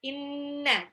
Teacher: Nun tasdid itu gunnah, itu masuk di makrosnya khaisyum